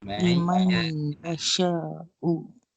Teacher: Seolah-olahnya kita masukkan terus nun itu 100% ke dalam huruf ya. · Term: idgham bi gunnah